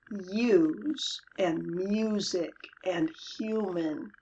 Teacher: We use /iu/ in the word use and music and human